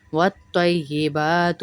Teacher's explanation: تئی نہیں ہے، طی موٹا کریں گے